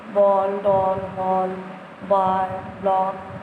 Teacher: अंग्रेजी के शब्दों के साथ बोली जाने वाली ध्वनि अ, आ और ओ ध्वनियों के बीच की है।